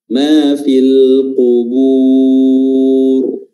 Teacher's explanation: huruf ra ini berharakat sukun ketika kita baca waqaf, dan sebelumnya didahului oleh huruf yang berharakat dhammah, maka huruf ra-nya tebal ya, seperti juga di ayat sebelumnya ya, al qubur juga huruf ra-nya tebal ya.